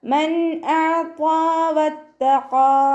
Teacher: നൂൻ സാക്കിനയെ വ്യക്തമാക്കിയിട്ട് ഉച്ചരിക്കുക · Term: ഇദ്ഹാറിൻ്റെ